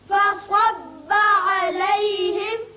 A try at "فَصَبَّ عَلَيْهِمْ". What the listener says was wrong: یہ چونکہ صاد ہے اس کو پر پڑھتے ہیں فصب نہ ہو بلکہ فصب ص ص فصب عليهم